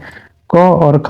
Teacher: क और ख जो है वो आपका कंठ ध्वनियां है जो कंठ से इसका उच्चारण किया जाता है